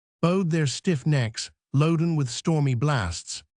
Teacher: the accent falls upon the third and sixth syllables